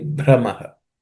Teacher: brah again in that brah is aspirated